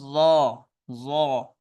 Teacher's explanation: ظا bold ہے، منہ بھر کے ہے، اور اس کی آواز بھی سافٹ ہے، ظا۔ آپ کی جو زبان کا آگے والا کنارہ ہے وہ آپ کی دانتوں کو تھوڑا سا چھوتا ہے، ظا، ظا، تھوڑا سا چھوتا ہے، نہ ہونے کے برابر، ظا۔